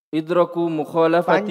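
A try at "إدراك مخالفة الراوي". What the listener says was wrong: Panjang toh, rohnya panjang.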